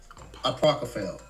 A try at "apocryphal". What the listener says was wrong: You put an R after the P.